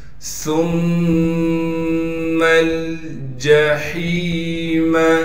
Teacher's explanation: ثم الجحیم، جیم کو بغیر کھینچے پڑھنا ہے۔ ہا کو صاف کر کے گلے سے نکالیں گے، گلے کا وہ حصہ جو منہ کی جانب ہے، اور ہا کو آگے یائے مدہ سے ملا دیں گے، اس لیے کہ وہ ساکن ہے، اور ہا کو ایک الف کے مقدار کھینچیں گے۔